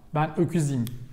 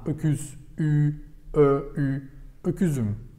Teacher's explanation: Because it ends in round, should be followed with round, round, round.